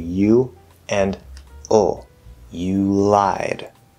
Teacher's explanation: this L is at the start of a syllable, so it's not going to become a half L